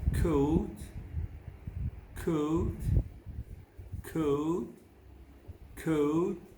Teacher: when saying oh hold on to the schwa sound a little longer than you normally would · the sound that we find in words like whole bow comb is not a single sound but a combination of two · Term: diphthong